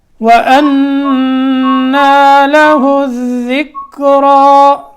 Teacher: وقف ہم نے کرنا ہے را کے کھڑے زبر کے ساتھ